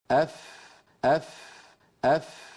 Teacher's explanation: اوپر والے سامنے کے دو دانتوں کو نچلے ہونٹ کے تر حصے پر رکھ کر ادا کیا جاتا ہے. ہونٹ کے تر حصے کو ہونٹ کا باطن بھی کہتے ہیں. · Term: فا کا مخرج